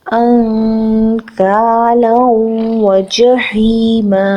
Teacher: انکالا وجحیما، نون ساکن کے بعد کاف آ رہا ہے. نون ساکن کی آواز کو ناک میں چھپائیں گے، اخفا کریں گے. کاف زبر الف کا ہے، 2 حرکت کھینچیں گے.